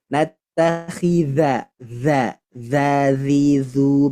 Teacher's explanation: ingat dza ini dia huruf yang dari lidah ujung lidah